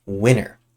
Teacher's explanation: Winter has a T when it's written, but we actually don't say this T.